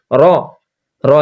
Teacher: জীবের আগার উল্টোপিঠ ওপর তালুর সঙ্গে লাগিয়ে দিলেই র কথাটি উচ্চারণ হয় · র এক আলিফ টানতে হবে হ্যাঁ এটা তিন আলিফ দেওয়া যাবে না